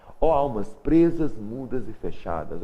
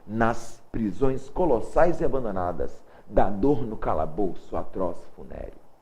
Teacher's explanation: Muita musicalidade, dá para ver a repetição dos sons aqui em S, tá? Esse som sibilante, tá? Repete bastante, chama-se aliteração.